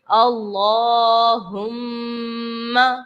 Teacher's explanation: اللہم میں آپ دیکھ رہے ہیں کہ میم مشدد ہے، اور جب بھی میم مشدد ہو تو وہاں پر ہم نے غنہ کرنا ہوتا ہے، تو ہم میم کی آواز اپنی ناک میں لے کر جائیں گے، غنہ کریں گے یہاں پر۔